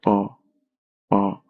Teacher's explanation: ओष्ठीय व्यंजन के उच्चारण में दोनों होठ जो है परस्पर स्पर्श करते हैं तथा जीवा जो है निष्क्रिय रहता है।